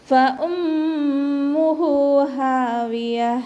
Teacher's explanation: ഫ ലൈറ്റ് ആക്കിയിട്ട് ഉച്ചരിക്കുക. ഹംസയെ നല്ലോണം ക്ലിയർ ആക്കി കൊടുക്കുക.